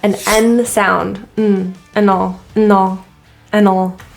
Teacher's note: the word and is typically just reduced to a quick n